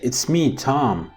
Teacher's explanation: The first intonation group is it's me, with the tonic on me. The second intonation group is Tom, which contains one syllable, and that syllable is the tonic syllable. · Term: two intonation groups